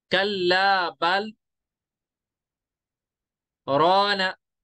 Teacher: बल पे मैं रुक गया लेकिन मैंने नई सांस नहीं ली, मैंने वही सांस रखी, वो कहते हैं ना सांस को पकड़ के रखते हैं, सांस नहीं छोड़ते।